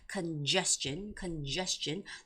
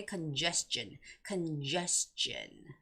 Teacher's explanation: it's congestion with the second syllable stress